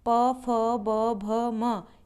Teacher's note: इनका उच्चारण स्थान ओष्ठ से होता है, यानी कि हमारे होठों से बोले जाने वाले हैं। यह बिना होठ की सहायता से नहीं बोले जा सकते हैं।